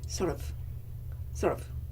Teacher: if i wanted to say sort of and i say it very fast i neutralize that vowel and i say sort of sort of okay telescope becomes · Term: vowel neutralization